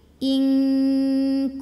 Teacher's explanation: Mim mati ketemu mim dengung lagi bunyi M tahan lagi